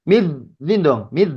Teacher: huruf Dal ujung lidah menyentuh kepada gigi seri eh atas apanya ujung atas ujung lidah I ujung lidah menyentuh